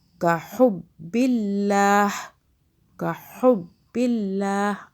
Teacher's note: اللہ باریک ہو رہا ہے. اللہ سے پہلے زیر آ رہا ہے